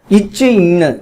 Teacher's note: இவ்விரு மெய்களும் இடைநா அதாவது நடுநா நடு அண்ணத்தை தொடுவதனால் தோன்றுகின்றன